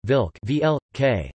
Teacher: In Czech and Slovak, either [l] or [r] can stand in for vowels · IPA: [kr̩k]